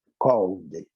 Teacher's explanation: O L é falado na garganta. Então, quando eu acrescento a partícula ed para caracterizar o passado e o particípio, called, só acrescenta o D. Called, no som.